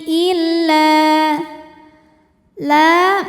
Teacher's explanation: illa la madobi'i zohiri. Karena ada alif didahului baris fathah. Maka huruf lam panjang dua harakat.